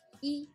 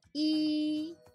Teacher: initial is very short and not very strong very light like e but final is heavier and longer